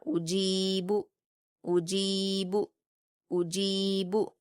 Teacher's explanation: صرف جیم پر یا مدہ ہے، اس کو ہم 2 حرکات کھینچ کر پڑھیں گے